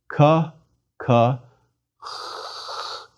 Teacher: One makes a K sound, but lets the air seep through the back of the throat as one pronounces it. Ka, ka, the air escapes. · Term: chi